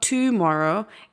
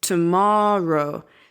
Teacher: So the strength of the word is on the ma, right? But we don't over accentuate the to at the beginning. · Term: schwa sound